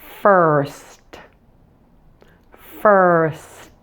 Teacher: smoothly blend the s and T sounds to the end of fur so we'll get first be careful not to separate the s · Then we're going to smoothly blend the S and T sounds to the end of fur